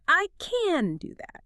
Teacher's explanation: When a speaker stresses the affirmative can, the vowel is noticeably lengthened. It becomes a drawn out flowing open sound.